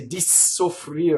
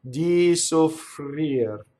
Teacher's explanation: For some reason, as Americans, we love to double. So we would always say di soffrir and double that S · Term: single consonant